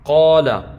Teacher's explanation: اب یہ قاف جو ہے یہ حروف مستعلیہ میں سے ہے، الف سے پہلے ہے، تو لہذا یہاں پر ہم الف کو موٹا کر کے پڑھیں گے۔